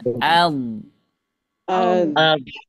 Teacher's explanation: ujung lidahnya itu bergeser dari menyentuh gigi sampai ke atas